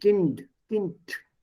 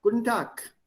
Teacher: B, D, G, become P, T, K in the Auslaut when you speak them out.